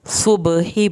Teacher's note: صبح با پہ کلکلا ہوگا، ہا کی آواز حلق سے نکلے گی